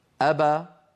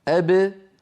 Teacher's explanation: ابا ابتعد فيها شيئان ابتعدت الشفتان وابتعد الفكان اما ابه المقلقله فابتعد فيها الشفتان دون الفكين